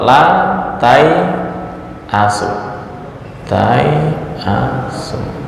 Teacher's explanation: Wa Aki W ini seolah-olah bacanya adalahas tai asu nah ini walaupun alifnya tertulis tetapi dalam ucapan Alif tersebut seolah-olah enggak ada baik dalam keadaan wakaf maupun wasal